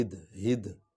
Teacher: ہا جو ہے یہ دو آنکھوں والی، اس کو سینے کی ہڈی سے نکالا جاتا ہے